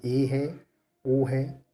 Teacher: अब हम बात करते हैं अर्ध संवृत में। जिन स्वरों के उच्चारण में मुख द्वार आधा बंद रहता है उन्हें हम क्या कहते हैं? अर्धसंवृत कहते हैं